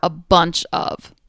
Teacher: feels good to say the pop of the be the B the nasality of the n and the final catch of the CH